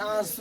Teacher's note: है जो चंद्रबिंदु वाला उसको पढ़िएगा तो इसको आपको नाक से बहुत कम सांस निकलती है मुख से अधिक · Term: अनुनासिक